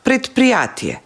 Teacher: според П, кое што е беззвучно, и Д станало беззвучно и станало Т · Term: едначење по звучност